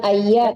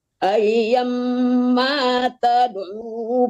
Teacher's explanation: langsung ditasdidkan ke mim, tidak ada penyangganya